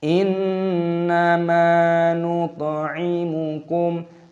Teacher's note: ada nun yang berharokat tasdid, ini hukumnya dibaca gunnah berdengung